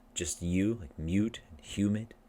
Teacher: in English, some words have the Y, the Y sound before the oo. And it's invisible in that it's not shown in spelling.